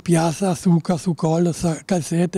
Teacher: mantengono ancora le forme interdentali Z, e, diciamo, sia la sonora che la sorda